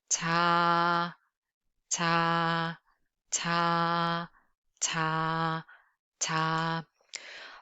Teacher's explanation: 자 is basically CH, basically voiceless sound only with no or minimal aspiration. It becomes voice sound between two vowels.